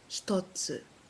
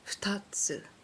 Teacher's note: So you're making the mouth sound tatsu, but when it's followed by a another consonant, hito, futa, you don't voice the sound until after you've said the subsequent consonant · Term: not voiced